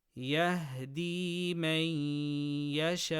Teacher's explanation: Nun sakina before ya from yanmu, idgham with ghunna.